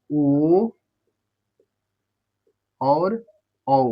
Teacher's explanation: तो कंठ और ओष्ठ से मिला के बोला जाता है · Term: कंठ ओष्ठ